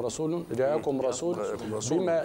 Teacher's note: اطباق الشفتين في الاقلاب كما تكلمنا عليه مرارا وتكرارا اطباقا خفيفا